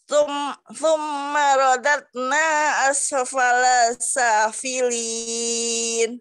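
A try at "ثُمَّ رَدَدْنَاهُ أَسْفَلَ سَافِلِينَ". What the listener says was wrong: Thumma radadnahu. Hu-nya terlewat.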